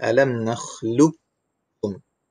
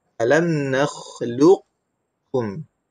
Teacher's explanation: Pertama dengan idgham kamil, yang kedua boleh dibaca dengan idgham naqis. Itu idgham naqis ni sifat qalqalah sahaja yang hilang, manakala sifat-sifat yang lain huruf itu dikekalkan